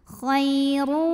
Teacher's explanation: huruf ra dibunyikan secara tafkhim karena barisnya lemah tanwin maka dibacanya tebal pangkal lidah angkat